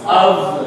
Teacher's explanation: Even though it's spelled with an F, it's pronounced with a V.